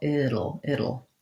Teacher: That's the same thing we do in words like little and Seattle. So being able to do that light flap and then the dark L